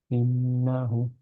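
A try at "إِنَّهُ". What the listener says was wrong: নাতে স্লাইট টান হয়ে গেছে, হ্যাঁ? ইন্নাহু।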